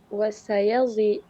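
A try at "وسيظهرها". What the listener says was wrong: wasayudhhiru, bukan yadh itu ya. Wasayudhhiruha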